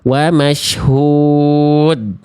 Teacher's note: saya pilih yang pertengahan, empat harakat ya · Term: mad arid lukun